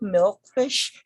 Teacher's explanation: again it's a composition of two words that are joined together the first component has the primary stress and then the second stress for the second component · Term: compound noun